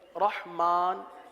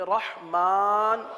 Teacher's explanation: ہے الرحمن، یہاں پر را آ گیا، اس را کو پر پڑھیں گے، ہا کو واضح کریں گے